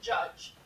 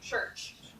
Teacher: is what we call an affricate and what it is is a combination of a stop and a fricative in one sound